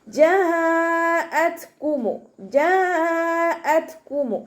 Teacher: ത സുക്കൂനാവുന്ന സമയത്ത് കുറച്ച് എയർ പാസ് ചെയ്യണം, സൗണ്ട് കൊടുക്കുക.